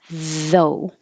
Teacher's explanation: though is the voiced TH, though, and you round your lips for the O.